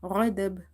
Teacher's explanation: Now here lam is stretched because of vertical harka, and غضب you have to do qalqala in ba sound because we are making it silent, because we have to pause here.